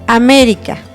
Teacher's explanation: América tiene su sílaba tónica en me y el acento en la e